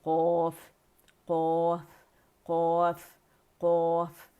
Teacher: آواز جو ہے وہ اوپر تالو کی طرف پھینکیں گے، اوپر جائے گی الحنک العالی کی طرف، اور باؤنس بیک ہوگی اور موٹی ادا ہوگی